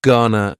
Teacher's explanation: Gonna is generally pronounced with the schwa.